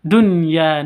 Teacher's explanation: tidak boleh masuk ke ya harus dibaca Dunya Nun jelas terang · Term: izhar wajib